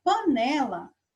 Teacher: como né é a sílaba mais forte dessa palavra, então ela vem aqui, ó, marcar um xizinho aqui no penúltimo, certo?